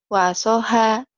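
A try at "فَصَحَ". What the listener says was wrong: F. Kedengarannya kayak wasoha ya, bukan. Fa ya, Fanta.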